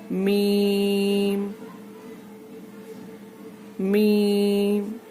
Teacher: मीम दोनों होठों के खुश्क हिस्से से, सूखे हिस्से से, ड्राई हिस्से से अदा होता है, नरमी से।